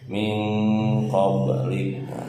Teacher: ba sukun asli di tengah-tengah kalimat, pantulannya sedikit saja